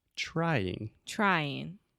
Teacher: so you start off with the CH sound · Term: TR sound